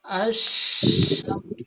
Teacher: huruf lam di sini bertemu dengan huruf shin, maka huruf lamnya tidak dibaca ya. Dan juga tidak ditandai adanya tanda sukun di sini di huruf lamnya ya. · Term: idgham syamsiah